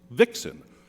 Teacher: vixen and and a vixen as a word is a trokay it has a stress on the first of the two syllables